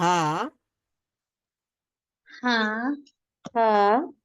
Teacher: হা উচ্চারণ করার সময় কিন্তু আমাকে হলকের শুরু থেকে আরেকটু উপরে উঠতে হয় এবং সেখানে এক ধরনের চাপ দিতে হয়